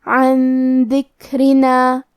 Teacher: کلمت عن کے آخری میں نون ساکن ہے پھر حرف الدال ہے، یہاں حکم ہے اخفاء تو ہم یہ حکم کو غنہ کے ساتھ ادا کریں گے